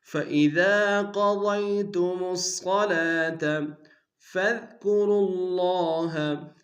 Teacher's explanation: فَإِذَا قَضَيْتُمُ الصَّلَاةَ فَاذْكُرُوا اللَّهَ، فا کو دال کے سامنے لیں گے، دال کو باریک ادا کریں گے، وا کو لفظ اللہ کے لام کے سامنے لانا شدہ زور دیں گے، کھڑا زبر ہے کہ دال میں کھینچیں گے۔